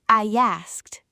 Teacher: A y sound slides in.